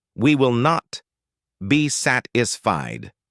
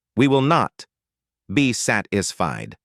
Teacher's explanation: The stress is on not and sat.